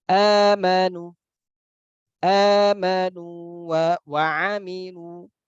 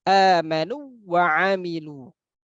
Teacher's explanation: Maka sebaiknya atau selayaknya kita membaca pada waw sukun yang pertama itu dengan panjang atau mad.